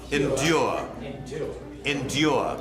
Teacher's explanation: like with a y in the middle like a liquid U